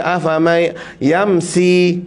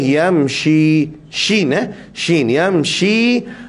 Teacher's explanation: Nun mati jumpa dengan ya, idgham ma'al gunnah. Yamshi, pastikan di sini SY. Jangan bunyi S saja. Ada orang baca afamai yamsi, tak boleh yamshi.